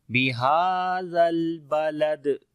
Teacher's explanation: لام کے ساتھ ملائیں گے، زال کو نرم پڑھیں گے، اور دال کے اوپر جب رکیں گے تو قلقلہ ہوگا یہاں پر بھی، کیونکہ دال کے اوپر جزم آ جائے گی